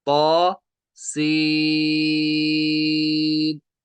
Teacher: सीन ये बना है मद्द लाजिम, इसको एक अलिफ खींचेंगे ता को, सीन को तीन अलिफ